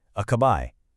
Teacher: The most important part is that last syllable. You really want to hit that bay sound at the end.